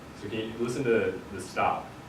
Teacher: one of the features of the African American vowel shift is the vowel in bot fronts towards the vowel in bat.